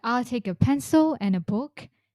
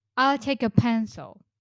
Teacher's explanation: So, every time you're pronouncing a list, remember when you haven't finished talking and you have uh something left to say, you can use rising tone to indicate that you will continue talking. But if your list is completed, you can use falling tone to show that you've finished talking.